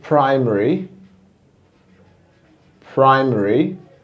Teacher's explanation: it seems like you don't have any letter a there because it's actually it sounds omitted · the schwa is sometimes omitted